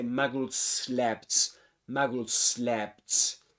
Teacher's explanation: we turn the last sound in the word, which is a Z sound, into a S sound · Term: connected speech